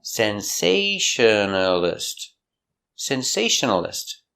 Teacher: five syllables sensationalist stress is on the second syllable